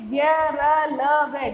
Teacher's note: य, र, ल, व, जब हम बोलते य, र, ल, व तो मुख के किसी भी भाग को पूरी तरह से क्या, जो जीभ है वो पूरी तरह से स्पर्श नहीं करती, इसलिए कौन से व्यंजन कहलाते हैं, अंतःस्थ व्यंजन कहलाते हैं।